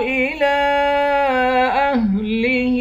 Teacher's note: لام پر کھڑا زبر بھی ہے اور مد بھی ہے، اس مد کو 3 الف کی مقدار کھینچ کر پڑھیں گے۔ اہلہ، ہا کے نیچے کھڑی زیر ہے، اس کو بھی 1 الف کی مقدار کھینچ کر پڑھیں گے۔